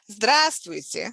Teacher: since the stress is on the first syllable it sounds like e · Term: reduction of the sound